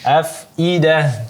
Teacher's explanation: I-nya hamzah ya, bukan ain.